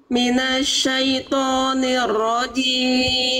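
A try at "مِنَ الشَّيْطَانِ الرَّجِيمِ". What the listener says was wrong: Oke, tinggal Getarannya dikurangi, jangan terlalu bergetar.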